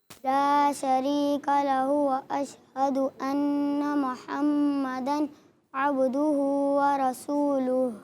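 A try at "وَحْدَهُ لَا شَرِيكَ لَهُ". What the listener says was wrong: اچھا یہ لہو کا ہا جو پیش ہے نا آپ نے، یہ کم کھینچا، اس کو کھینچنا ہے. وحدہ لا شریک لہ، وحدہ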